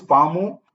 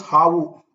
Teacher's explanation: in most cases, Kannada, the pa sound becomes a ha sound.